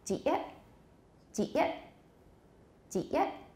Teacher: a final T can turn into a glottal stop very easily. So there's no T there, there's just glottal stops.